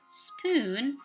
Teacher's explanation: the P sound that comes after the sound S, like in the word spoon, should not be aspirated. So when you put a piece of paper in front of your mouth, when you say spoon, the paper should not be moving.